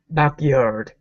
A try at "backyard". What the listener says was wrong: Good.